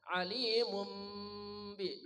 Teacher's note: boleh jelas mimnya tetapi dengan dengung ya, kedua mulut dirapatkan. Alimum bi, 2 mulut rapatkan. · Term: iqlab